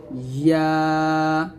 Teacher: ইয়া অবশ্যই জিবার মধ্যখান উপর তাল সঙ্গে লাগাবেন